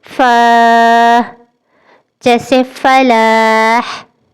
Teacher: فا اوپر کے دانتوں اور نچلے ہونٹ سے ادا ہوتا ہے